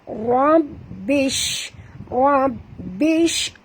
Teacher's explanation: bunyikan tafashi, itu angin yang keluar daripada shim